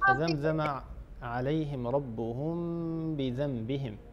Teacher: ربهم في آخرها ميم ساكنة، هذه الميم بعدها باء الحكم، هنا إخفاء. بذنبهم عندنا نون وبعدها باء الحكم، هنا قلب، يعني نقلب نون الساكنة إلى ميم ونخفي الميمة في الباء.